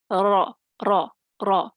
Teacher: زبان کا کنارہ مع پشت زبان جب ثنایا اور ربائی کے مسوڑوں سے لگے تو اس سے را نکلتی ہے